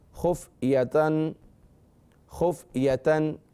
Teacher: اگر ملا کر بھی پڑھ لیں تو غنہ نہیں ہوگا کیونکہ آگے حروف حلقی ہے